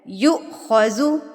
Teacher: یہاں پر یو پہ میں نے جو جھٹکا دیا ہے یہ میں نے پہلے بھی بتایا ہے، اگین یہاں پر میں ایکسپلین کر دیتی ہوں. یو حمزہ کے اوپر جب جزم آ جاتی ہے یا سکون کی حالت آ جاتی ہے تو اس کو ہم جھٹکا دے کے پڑھتے ہیں. یو خوضو پڑھا جائے گا، یو خوضو غلط ہے، یو خوضو.